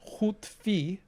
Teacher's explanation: we have this this rounding of the ooh spreading onto the e but it stops at the word boundary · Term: vowel harmony